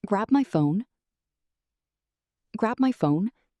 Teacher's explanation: When you have a list like this, before each comma, the inflection stays raised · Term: inflection pattern